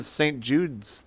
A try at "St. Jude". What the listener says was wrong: Yeah, St. Jude. Without an S on the end. No S.